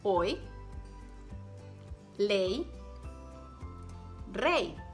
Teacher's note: When it appears alone by itself, or when it's at the end of the word, it's pronounced like a pure I vowel